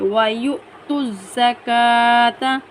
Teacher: حمزہ کو ہم جھٹکا دیتے ہوئے ادائیگی کریں گے۔ وَيُؤْتُوا الزَّكَاةَ، زا کو سختی کے ساتھ پڑھیں گے، کاف کے اوپر کھڑی زبر ہے، ایک الف کی مقدار کھینچ کر پڑھیں گے۔